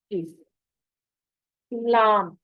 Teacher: जुबान के अगले हिस्से को ऊपर के सामने वाले 6 दांतों और 2 दाढ़ों से, मसूड़ों से अच्छी तरह लगाने से लाम अदा होगी